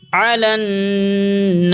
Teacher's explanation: نون کے اوپر گننا کریں گے، تشدید ہے